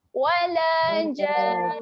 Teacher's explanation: panjangkan jan 6 harakat kemudian kita dengung.